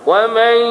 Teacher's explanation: Bila ada tanda atas nun, maknanya nun itu tidak boleh diizharkan kerana dia tidak ada tanda mati. Jadi kita sembunyikan nun tu sedikit